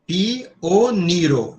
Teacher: Então, a acentuação é no ni · O IO não é uma vogal. Esta aqui, pioniro, cada vogal é uma sílaba.